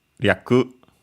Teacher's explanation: since it ends with u and there's a unvoiced consonant, you could also hear it with the u barely pronounced or not pronounced at all